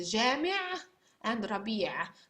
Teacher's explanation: Note that at the end it's not very strong, the Ain, just like the beginning.